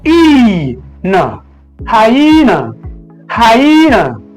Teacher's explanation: the stress syllable of this word falls at the middle on the second syllable